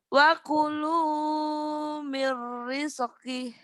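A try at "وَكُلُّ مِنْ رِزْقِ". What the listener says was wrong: Rizq jangan ada rizq ya, jangan ada kolkol. Rizki. Nah, jangan ada e-nya.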